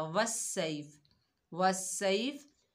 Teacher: اور مد کو بھی ہم نے صحیح نہیں پڑھا، صاد کی جگہ سین پڑھا